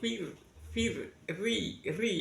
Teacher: kalau tipis di ujung lidah sambil meringis seperti ri itu adalah yang tipis